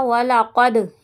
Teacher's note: یہاں پہ آواز پلٹ کر آئے گی، قاف کو موٹا کریں گے